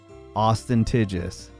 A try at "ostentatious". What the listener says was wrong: There's no G, dude. No G. Ostentatious. Shus. Ostentatious. you did have a G in there.